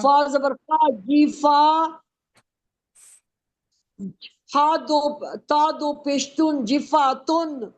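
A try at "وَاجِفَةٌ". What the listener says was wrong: وا پورا پڑھے نا. واو سے پڑھیں، اب واو سے وا.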